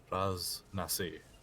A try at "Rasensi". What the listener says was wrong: not Nasi, Nsi. Rasensi. Nsi.